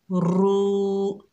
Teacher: ये वाव मद्दा है, एक अलिफ की मिकदार खींच कर पढ़ेंगे